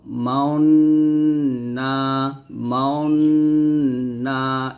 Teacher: আয়াতটা মাওনা এই যে এখানে মাও এখানে যে গুন্নাটা আদায় করব গুন্নাটা আদায় করার সময় আমাদের ঠোঁটটা গোল করে ফেলবো মাওনা মাও এরকম ভাবে ইসমাম করতে হবে ঠোঁট গোল করে গুন্নাক